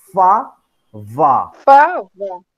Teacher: So labiodental, we mean the lower lip approaches or touches the upper teeth.